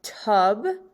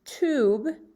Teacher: so when we say tube the long u makes the oo sound almost like an o